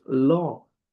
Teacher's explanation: Let's begin by explaining the the correct pronunciation of the long vowel sound. This is a long posterior vocalic sound where the mouth remains open and the lips rounded.